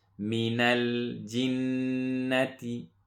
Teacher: after the jim we have a noon with the shadda, so we make a gunna, and then make sure we don't stretch the noon